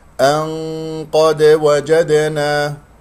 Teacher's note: إذا وقفت طبعا تكون الراء مفخمة لأن ساكنة قبلها مفتوح سيكون، ولكنه إذا استمرنا في القراءة تكون مرققة لأنها مكسورة. أن قد نون قاف إخفاء، ولكنه تكون الغنة مفخمة بحسب مرتبة القاف، مرتبة ثانية مفتوح، ولدينا دال مقلقلة قلقلة صغرى في وسط الكلام، ولدينا دال في كلمة وجدنا قلقلة صغرى في وسط الكلام.